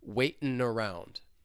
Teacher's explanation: I can link that final N sound with the vowel sound in around. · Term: Linking